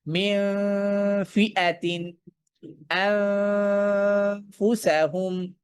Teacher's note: সামনের দুই দাঁত ধারালো অংশ, নিচের ঠোঁটের পেটে আফ। যখন নুন সাকিনের পর ফা আসছে, আমি গুন্নার মধ্যেই আমি ফায়ের পজিশনে আমার ঠোঁটকে বা ফায়ের মাখরজে আমি আমার ঠোঁটকে মানে বসিয়ে রাখছি।